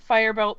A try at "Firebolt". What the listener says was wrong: Every time you say firebolt, it sounds like you're saying firebelt.